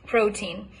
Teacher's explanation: It's always a pure T, even though it's not really in a stressed position.